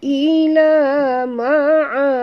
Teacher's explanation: kita berhenti dengan mad arid disukun dan juga qalqalah kubra ya, kerana dal ini di hujung ni kita matikan dia.